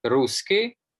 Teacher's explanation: The adjective ending y became I, which is also common with all the other South Slavic languages. For instance, in Pannonian Rusyn, you say ruski for Rusyn.